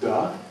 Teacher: You can also aspirate the voiced stop